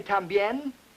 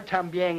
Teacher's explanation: he does not hear any significant contrast between n and ng